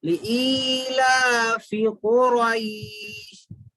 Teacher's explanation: فا زیر فی، جلدی پڑھیں گے، فی کھینچیں گے نہیں، لا کھڑا زبر لا کو تو کھینچیں گے لیکن فی کو نہیں کھینچیں گے